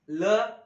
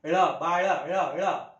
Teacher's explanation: ल दाताला जीभ लागते ळ वरती जीभ मुरडते